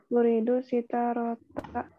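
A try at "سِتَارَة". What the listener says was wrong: sitarotan ya. Oke, untuk kata sitarotan kalau mau diwakafkan tidak ada istilahnya sitarota. Uridu sitaroh. Tak berfathatain ketika wakaf jadi ha sitaroh.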